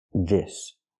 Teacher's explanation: the S makes a true s sound s with no voice